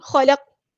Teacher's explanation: letter ہے، پورا ادا کریں گے، لام باریک پڑھیں گے، اور قاف کو ہم ساکن کر دیں گے وقف کرتے ہوئے، یہاں پر قلقلہ ہوگا ، خلق اس طرح، خلق ایسے آواز کو روکنا نہیں ہے،